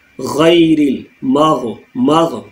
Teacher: غی اپنے تھروٹ کے بالکل اوپننگ پوائنٹ سے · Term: غین کا مخرج